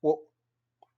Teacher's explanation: so that's indo so the next alphabet is o which is somewhat similar to our o but with less emphasis which is like a shorter vowel